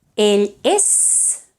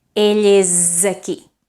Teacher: That S that used to be voiceless is now voiced, isn't it?